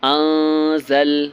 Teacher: یہاں پر نون ساکن کے بعد زا ہے، زا حرف اخفا ہے اس لیے یہاں پر اخفا کرنا ہے۔